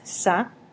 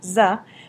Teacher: Pero misa, misma, en misa es sa, en misma es za